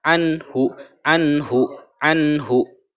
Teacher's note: Idhar itu artinya jelas, tidak, dan membacanya tidak mendengung. An nunnya jelas.